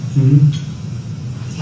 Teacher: there's rising intonation on the last part